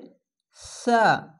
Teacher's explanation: সামা, এখানে অবশ্যই সা এই সিনের মতন উচ্চারণ করবে না, এটি সা, হালকা জিহ্বা বের করে সা এরকম উচ্চারণ হবে